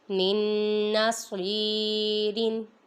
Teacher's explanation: سواد پہ یا مدہ ہو رہا ہے، ادھر لمبا کریں گے۔